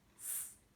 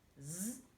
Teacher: Mais la seule chose qui change, c'est que dans le son Z de zèbre, on rajoute sa voix. On utilise ses cordes vocales. Donc, dans la gorge, on va sentir vibrer, gonfler.